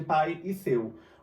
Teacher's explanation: O A sai com mais intensidade do que o I. Logo, o meu A é vogal e meu I é semivogal.